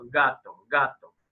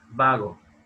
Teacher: gasto a diferencia de esto vago esa próxima ante nuevamente porque la lengua si se aproxima al velo del paladar pero no es el mismo carácter de aproximación que cuando la